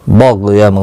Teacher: गाइन साकिन है, इस पर कलकला नहीं होना चाहिए, मुस्तालिया है, पूर पढ़ना है